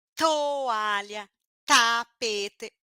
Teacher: a língua toca no dente explode o ar e não faz força no pescoço sai bastante ventinho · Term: língua dental